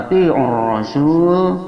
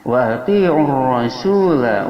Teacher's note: alif lam syamsiyah wajib idgham, cara bacanya lam dimasukkan ke ra, diidghamkan